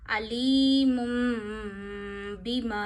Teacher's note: इसी तरह दो ज़बर दो ज़ेर दो पेश के बाद भी बा आए तो इन्हें मीम से बदल के गुना करते हैं। यानी मीम की भी आवाज आपको नाक में ले जा के एक उंगली जितनी ठहरानी है इसको कहते हैं कलब। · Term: इकलाब